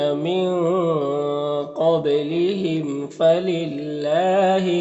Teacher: میم میں اظہار شفوی ہوگا، میم کو ظاہر کر کے جلد پڑھیں گے